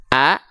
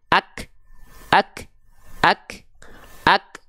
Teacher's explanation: atasnya ada tanda petik seperti ini ini namanya adalah tanda sukun Huruf Kaf di sini dilafahkan menjadi ak tidak ada bunyi vokalnya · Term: kondisi sukun